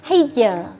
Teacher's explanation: dibaca tarqiq atau tipis dengan seperti tersenyum bukan seperti moncong